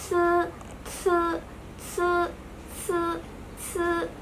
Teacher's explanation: ujung lidahnya bertemu dengan gigi atas bagian belakang. Tetapi ee tidak ada udara yang keluar karena daun lidahnya juga terangkat. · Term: inisial se